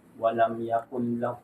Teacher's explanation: yung lam na yan, nun, sukun, before lam, ang rulings niyan ay kabilang sa rulings ng nun asakina wa tanwin, which is al-idgham.